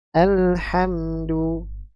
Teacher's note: Yang perlu diperhatikan di sini lam memiliki sifat bainiyah ya. Jadi suaranya kita alirkan. Al jangan alha jangan dipantulkan juga ya.